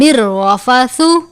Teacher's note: لیلۃ الصیام الرفث را کے اوپر تشدید بھی ہے، را کے اوپر زبر بھی ہے. را کو سختی سے ادا کریں گے، را کو پر پڑھیں گے